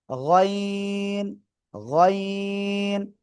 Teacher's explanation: গলার শেষ ভাগ থেকে এই অক্ষরটা উচ্চারণ করতে হবে।